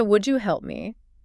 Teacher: certain alveolar consonant sounds, made with the tongue near the ridge behind your teeth, meet the glide J, which is the Y sound. They physically merge into a new single sound known as an affricate or a fricative. An affricate, that's a sound that starts with the complete closure of the airflow, like a stop, but ends with a gradual release of friction, like a fricative. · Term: palatalization